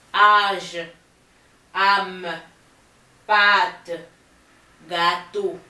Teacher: The pronunciation of a vowel with this accent circumflex makes it longer one. So the difference between this A and this one is that this one is longer.